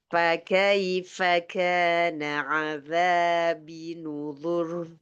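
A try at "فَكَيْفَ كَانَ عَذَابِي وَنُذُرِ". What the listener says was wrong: Wa nuzur. Wa-nya tinggal. Azabi wa nuzur. Panjang. Azabi wa nuzur. Panjang.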